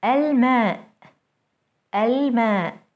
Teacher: Moon letters allow the L before them to be pronounced fully as L.